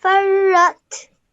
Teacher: you join the fa to the ra and then the ra to the ta because of the sukoon